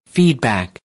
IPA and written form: ˈfiːd.bæk (Feedback)